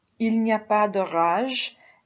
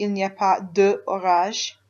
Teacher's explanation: And this de has dropped out. It's it's e because it's followed by an o, so it makes the liaison the same way as this one does here.